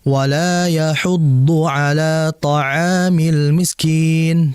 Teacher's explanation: Kemudian yang harus kita pahami juga adalah almiskin sin-nya. Sin di situ tetap mengalir sehingga jangan sampai kita membacanya dengan syiddah atau bahkan langsung memutus.